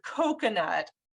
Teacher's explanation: the first syllable is stressed, and that's the same sound as rose coat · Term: stressed syllable